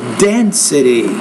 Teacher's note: so density the stress is on that first syllable